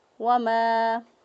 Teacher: وما، میم زبر الف ما، الف مدہ ہے، الف حرکت سے حالی، ما قبل زبر ایک الف کے برابر لمبا کیا